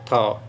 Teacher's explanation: स्पर्श भी है, महाप्राण भी है और दंती भी है